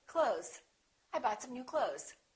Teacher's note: you might hear a tiny th with some people's pronunciation but most people just say clothes